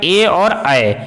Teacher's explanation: ए और ऐ का उच्चारण कंठ और तालु दोनों से होता है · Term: कंठ तालु